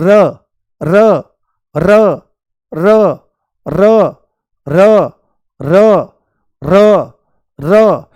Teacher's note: जीभ तुरंत ऐसे चलती है, आगे की तरफ चलती है, और चलने के साथ में ही ये कहां लगती है, ऊपर वाले मसूड़े पर लगती है। बहुत हल्की सी टच होती है उसकी टिप पॉइंट, ऐसे आगे लगती है और लुढ़कती हुई सी मालूम होती है ना, मुंह में लुढ़कती हुई सी आगे मालूम होती है।